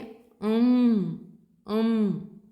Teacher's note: nose for its point of articulation as you say M um you close the mouth and some air comes out of the nose because only the nose is the point of articulation